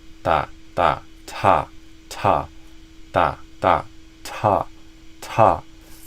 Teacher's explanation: the biggest thing there is the amount of air coming out with the t.